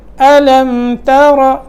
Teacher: تا باریک ہوگی اور را جو ہے اس کو موٹا کر کے پڑھنا ہے